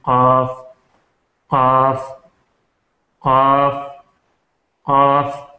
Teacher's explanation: یہ جو اقصائے لسان ہے بالکل آخر کا، یہ جو اوپر کو اٹھ کے تالو کے ساتھ لگے، جو کوا ہوتا ہے جو نیچے کی طرف جو کوش کا لوتلا لٹک رہا ہے بالکل اس کے ساتھ، جب زبان اوپر کو اٹھے تالو سے ٹکرا کے تو یہاں سے قاف نکلتا ہے